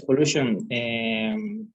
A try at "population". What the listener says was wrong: Population. Yeah, because you said pollution. You said pollution instead of population.